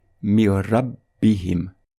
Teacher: Lorsqu'on va lire les 2 mots ensemble, on va appliquer la règle de l'assimilation sans nasillement